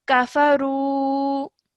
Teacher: just remember to elongate the ru sound for about 2 seconds because of the vowel madda